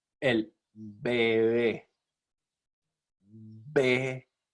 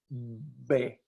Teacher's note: En el primer sonido, la B se realiza con ambos labios y se cierran ambos labios.